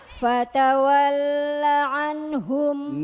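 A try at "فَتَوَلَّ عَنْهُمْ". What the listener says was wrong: Nah tadi kan gak wakaf ya. Gak wakaf ya. Tanda wakaf.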